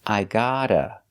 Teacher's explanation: the first vowel is open ah like stop and hot